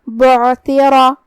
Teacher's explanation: کلمت بعثر میں حرف العین کو حلق کے درمیان والے حصے سے ادا کرنا ہے تاکہ ادائیگی کا بھی دھیان رہے. را کا حکم ہے تفخیم، ہم اسے بھاری آواز میں ادا کریں گے کیونکہ اس پہ زبر ہے